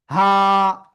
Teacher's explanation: গলার শুরু থেকে অক্ষরটা উচ্চারিত হয় হা।